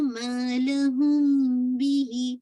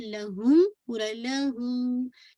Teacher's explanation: तो आपने इख्फा करना है, थोड़ी सी आवाज को छुपाना है